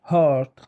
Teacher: يتم إنتاج هذا الصوت بين الحبال الصوتية في الفراغ الموجود بينهما، لذا يطلق عليه ساكن مزماري glotal. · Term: صوت ال H